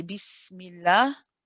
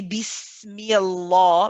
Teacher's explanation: if you have the name of allah and before it the last letter has a kasra then the lamb in the name of allah will be read light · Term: lamb is light